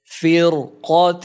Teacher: Here there is a Kasrah before Ra, but after Ra there is Qaf, which is a heavy letter. Because of Qaf, the Ra is pronounced heavily.